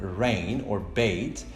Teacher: For example, if we take the vowel A, like in the word rain or bait, we will notice in the Cardinal vowel chart that this vowel is a mid-high front vowel